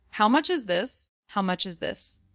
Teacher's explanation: Feel the h sound in how? And stress much.